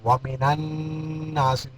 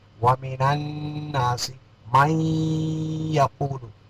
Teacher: ومن الناس، یہاں نون مشدد، یہاں ومن الناس، نون کو نون میں ادغام کریں گے